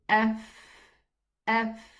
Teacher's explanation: the edge of the upper incisors goes down to touch the inner part of the lower lip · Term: letter fa